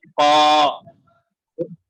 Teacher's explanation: یہ قا جو ہے قا، اس کو حلق سے نکلیے